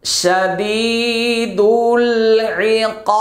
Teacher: মাদের হরফের বামের হরফে ওয়াকফা করলে 3 আলিফ টানতে হবে, আর বায়ের উপরে জজম দিতে হবে